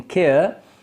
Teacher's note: in the diphthong air as in care the lips spread at the beginning and then they are neutral at the end